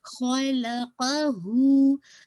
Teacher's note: खलक़हू, अब ये जो हू है इसको आपने 2 काउंट पढ़ना है। इसमें देखिए क़ाफ और ख़ा ये दोनों हेवी हैं, बाकी आपने लाम और हू को आपने हेवी नहीं करना, ठीक है? हू को आप 2 काउंट स्ट्रेच करेंगे, मद्दुल सिलतुल सुग़रा, ठीक है इंशाल्लाह।